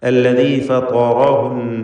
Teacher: ത്വാഉം റാഉം തഫ്ഖീം ചെയ്ത് ഉച്ചരിക്കണം. ത്വാ ഇസ്തിഅലാന്റെ അക്ഷരമാണ്.